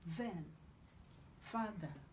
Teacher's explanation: this is a dental fricative. So you have to put your tongue in between your two upper and lower teeth before you pronounce it.